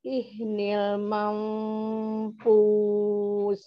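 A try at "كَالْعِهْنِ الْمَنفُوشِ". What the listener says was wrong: Ini ai ya, ai. Ai mil, ai mil, bukan ih. Tapi ai mil mampus. Syin, ya, mampus.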